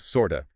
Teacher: the t sound at the end of sort just disappears. It becomes sort of >> sort.